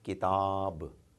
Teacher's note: when it comes to an Aleph immediately following Fatah it becomes the sound becomes twice as long